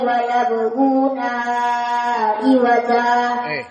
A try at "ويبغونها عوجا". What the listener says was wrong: Kenapa panjang? Apa hukumnya madsilah? Tidak ada madsilah di sini.